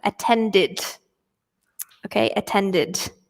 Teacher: So here we pronounce the E, so it makes an ID sound